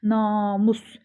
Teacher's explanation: A uzanır vuruğu ikiyə düşür. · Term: vurğu